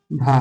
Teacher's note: ओष्ठ महाप्राण घोष व्यंजन का उदाहरण है